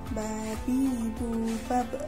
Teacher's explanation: Melafalkan huruf Ba merapatkan kedua bibir. Ketika Ba mati, maka suaranya memantul.